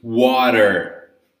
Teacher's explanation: Water in this case with a sound of R or D.